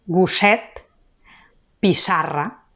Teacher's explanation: Tenim la doble S, que sona sorda, alveolar. També sol anar entre vocals.